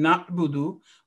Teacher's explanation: It comes out of the throat, the inner part of the throat, ayn.